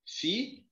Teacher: A sílaba mais forte é a última. É uma oxítona.